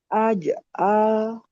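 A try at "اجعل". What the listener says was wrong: Nah, itu kayak masih ada C tuh, masih aj'al. Aj'al. Dibuat tadi ya, pantulannya itu apa alamiah gitu, alami dia. Aj'al gitu. Dan setelahnya jangan kasih jeda. Aj'al gitu. Jadi enggak aj'al.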